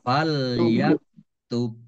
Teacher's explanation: bak sukun dibaca kolkolah atau memantul, ditambahkan pantulannya